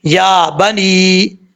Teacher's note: یا کے اوپر کھڑا زبر ہے تو ہم یا کو لمبا کریں گے ایک الف کی مقدار